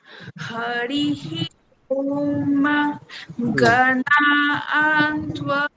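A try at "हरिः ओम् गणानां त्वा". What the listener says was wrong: হলো না, নাতে উপর থেকে নামাতে হবে নিচে, তাহলে গণানান ত্বা, নাতে উপর থেকে নিচে নামবে।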